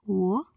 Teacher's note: in the production of sound O, the soft palate is raised to shut off the nasal passage and obstruction is caused by both lips